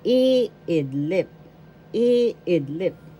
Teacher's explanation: to sleep first syllable e second syllable id third syllable lip the first syllable has the accent.